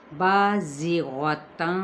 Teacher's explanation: بازغتاً قال، الف مدہ زا سفید لیٹر یعنی مثل سیٹی کے۔ غین پر حروف مستعلیہ، تنوین زبر ہے، آگے قاف حروف مستعلیہ میں سے تو اخفا بھی ہمارا پر ہوگا۔ قال الف مدہ کے ساتھ، قاف بھی پر آلریڈی ہوتا ہے تو الف اس کے ساتھ ہی کیا ہوگا، پر ہو جائے گا۔